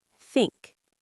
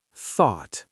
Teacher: There's the unvoiced one, where you don't use your vocal cords, and the voiced one, where you make a vibration.